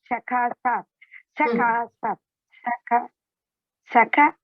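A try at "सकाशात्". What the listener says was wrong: No, Shakashat is one word.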